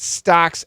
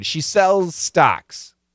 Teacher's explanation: a little bit of Z A lot of s but the Z is there